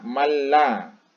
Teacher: jadi dibaca dengan tegas, tidak menggunakan gunnah, dimasukkan huruf nun itu dimasukkan ke la. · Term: idgham bila gunnah